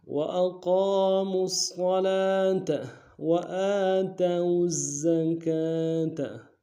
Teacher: صاد کو موٹا ادا کریں گے، صاد کے اوپر تشدید زور دیں گے ، لام کے اوپر کھڑا زبر ہے ایک اعتدال میں کھینچیں